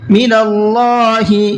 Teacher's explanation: اللہ کے لام کو پر کر کے پڑھنا ہے، اس لیے کہ یہاں پر بھی اللہ کے لام سے پہلے زبر ہے۔